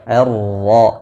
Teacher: basalnya rawan terbaca tebal jadi harus dijaga ketipisannya dengan vokal a ro tasydid berharakat fathah maka dibaca dengan tebal